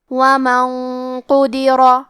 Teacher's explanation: کیونکہ قاف حروف التفخیم میں سے ہے اور غنہ اپنے اگلے والے حرف کا حکم لیتا ہے تفخیم میں اور ترقیق میں، تو ہمیں یہ غنہ کو بھی بھاری آواز میں ادا کرنا ہے. وَمَن قُدِرَ.